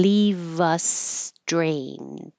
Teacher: You don't have to have a D and leave. Just drop the D